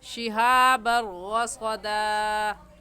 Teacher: را کے اوپر تشدید ہے اور تشدید کو پڑھنے کا طریقہ یہ ہے کہ اس کو 2 مرتبہ پڑھا جاتا ہے. ایک مرتبہ پیچھے والے لفظ کے ساتھ ملا کر دوسری مرتبہ خود.